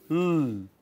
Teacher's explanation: When you produce L, then tip of the tongue is in contact with the upper teeth or alveolar ridge